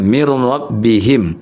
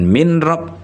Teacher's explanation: min itu bunyi nun sukunnya digabung, diidghamkan ya, digabungkan dengan ro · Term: bila gunnah